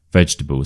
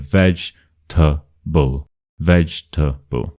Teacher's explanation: there are 2 schwas here. The stress is on the veg, and then we have veg-ta-bull. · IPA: /ə/